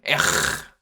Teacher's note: It's what's called a guttural R. It's kind of like a strong English H.